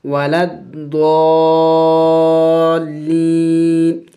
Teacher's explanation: وقف کریں گے تو وقف میں نون کو سائلنٹ کر دیں گے یعنی ساکن کر دیں گے